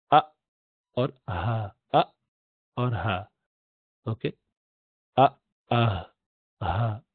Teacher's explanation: حمزہ پہلے آیا لفظ اللہ میں، اور ہا آخر میں آیا، اور یہ دونوں اقصى الحلق سے نکلتے، سب سے نیچے والے حلق سے